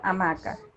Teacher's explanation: Por ejemplo, en la palabra hamaca, El acento prosódico se encuentra en la sílaba ma.